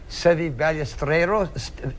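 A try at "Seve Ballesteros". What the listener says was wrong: Ballesteros. You got to roll that R.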